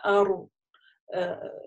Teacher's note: Написание у нас, опять же, так как гордая буква, два таких, соединением, согласовками, да, ра, ру, ри, ару. Она на сукуне, такая придерживаем немножко, ару. Маленькая такая, есть вибрация, как на языке должна ощутиться, при этом ары неверно, да, то есть резко ары, нет, это значит, вы не смогли его придержать.